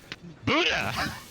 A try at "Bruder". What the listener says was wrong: Nah, you have the wrong pronunciation. Bruder. You have to speak the R in Bruder.